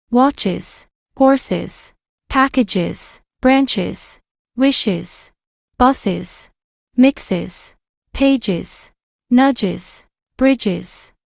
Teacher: we make the z sound after words ending in an S sound. But instead of saying S, we will say is